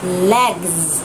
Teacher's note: Thêm s vào nha, và trong phiên âm nó là z sung. Mọi người nhớ là phải bật cả âm cuối của các từ vựng ra nhé.